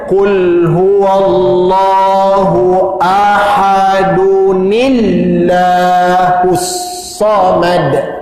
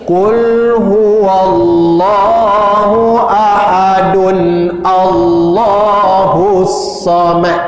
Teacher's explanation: Kalau kita nak sambungkan dalam satu nafas, maka kaedah ini perlu digunakan, iaitu menukarkan dal baris dua di depan kepada baris depan saja. Ahadun jadi ahadu. Kemudian ditambah nun baris bawah ni. Dan ni inilah yang kita akan masukkan menekan pada lam lafzul jalalah ni.